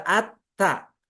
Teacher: Pengucapan ta itu harus sambil tersenyum, ada angin tipis keluar.